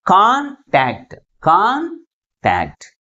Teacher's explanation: ఏ syllable ఎక్కువ ఫోర్స్గా పలుకుతుంది? First syllable is pronounced with greater force comparing with second one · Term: ప్రైమరీ స్ట్రెస్